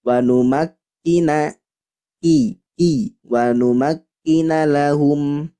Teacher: Jadi artinya hanya percikan udara. Jadi huruf kaf tidak boleh terlalu pecah karena apa? Karena syidahnya lebih kuat daripada hamesnya. Hamesnya hanya percikan saja, percikan udara. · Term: hams